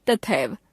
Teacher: उदाहरण के लिए तथा एव शब्दों का मेल होने पर तथा शब्द की अंतिम ध्वनि आ तथा एव शब्द की पहली ध्वनि ए परस्पर मिलकर ऐ हो जाती है और शब्द बनता है तथैव। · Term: संधि